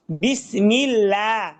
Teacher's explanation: আল্লাহ শব্দের ডান পাশে যদি জের আসে তাহলে আল্লাহ শব্দকে বারিক পাতলা করিয়া পড়িতে হয়